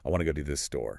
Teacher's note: To keep the rhythm bouncing between those three words, the native speaker squishes to go to the into a rapid mumble